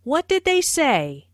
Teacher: This is a what question, so the intonation falls at the end. · Notice how say is emphasized, but the intonation falls at the end of the word.